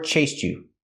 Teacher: you can link the sounds and say chased you. You can make the ch sound like in chicken.